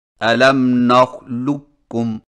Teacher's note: قاف کی آواز کو بالکل ختم کر کے صرف ایک کاف مشدد سے پڑھیں